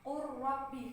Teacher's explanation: ro nah Contohnya seperti dalam sukun bertemu dengan huruf ro berharakat jadi lamnya di idgham kan ke huruf ra itu secara sempurna · bukan qul rabbi, bukan, tapi qur rabbi karena lam sukunnya sudah melebur secara sempurna ke huruf ra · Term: idgham mutaqaribain